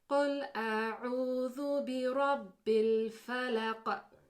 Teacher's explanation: You can hear the kind of Qaf bouncing at the end of each ayah. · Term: Qalqalah